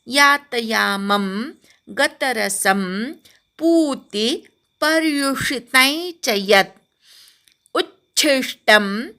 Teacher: उच्छिष्ट, उ बरोबर अर्धा च म्हणायचा, छी बरोबर ष्ट म्हणायचा